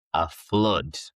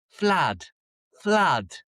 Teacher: So, the ooh the o o becomes an uh flood.